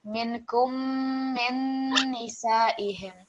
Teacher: when we have the mim mushaddad and nun mushaddad that we want not only to stress the letter but also to have the slight nasal sound.